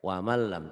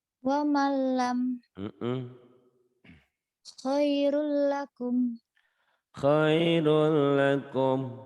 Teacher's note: Lam dan ro idgham bila gunnah ya. Man, waman n-nya hilang masuk ke l. Wamal lam tanpa dengung tanpa ditahan.